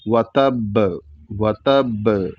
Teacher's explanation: تشدید کی وجہ سے بھی اس کو زور سے اس پر روکیں گے تاکہ با پلٹ کر کے آئے، اور قلقلہ کی وجہ سے بھی اس پر زور سے رکیں گے.